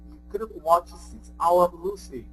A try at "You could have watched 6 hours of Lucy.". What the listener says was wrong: Yeah, so the could have watched was really good. That was perfect.